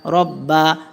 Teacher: রয়ে জবর র পুর মোটা করে পড়িতে হয়